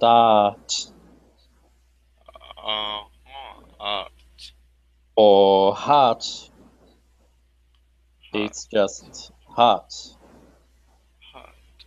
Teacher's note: the r isn't really pronounced it's just art or heart